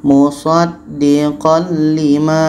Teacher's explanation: Jadi ini hukumnya idgham bila gunnah, bunyi tanwin masuk ke lam dan tidak ada dengung.